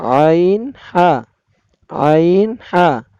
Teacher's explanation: 2 number মাখরাজ হলকের মধ্যখান হইতে আইন হা